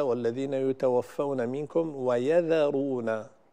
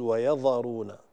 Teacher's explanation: في قوله تعالى: والذين يتوفون منكم ويذرون، الذال هنا البعض يفخمها فيقول ويذرون، وهذا خطأ شائع. فالذال ينبغي دائما أن تكون مرققة، هي والياء التي قبلها